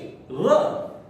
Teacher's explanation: तो र बोलेंगे तो आपके दांतों के ऊपर जीभ लगेगी और उसमें से आवाज आएगी। आपको ऐसे लगेगा र जो है वो कुछ कंपित हो रहा है, र।